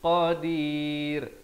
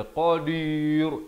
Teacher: qadir dan ra-nya jadi nipis. Jangan baca qadir, itu tebal, salah ya.